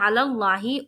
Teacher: اور بیچ میں جو ہے علی اللہ، اس میں دیکھیے لفظ اللہ کے لام سے پہلے جو لام ہے اس میں زبر ہے، اس لیے یہاں پر ہم پر پڑھ رہے ہیں